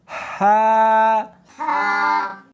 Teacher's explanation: ہا نہیں پڑھنی بلکہ اس کو حلق میں سے نکالنا ہے، سینے میں سے نہیں نکالنا